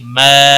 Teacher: الف مدہ ہے، 1 الف کے برابر کھینچ کر پڑھیں گے